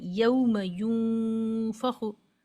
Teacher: नून साकिन को हम छुपा रहे हैं। यानी जबान की नुक ऊपर नहीं लगा रहे। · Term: इफाए हकीकी